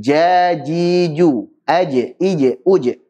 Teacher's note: Ini meskipun semuanya di tengah lidah, dengan langit-langit atas, tapi cara pengucapannya berbeda. Adapun untuk huruf jim, dia tengah-tengah lidah, nempel ke langit atas.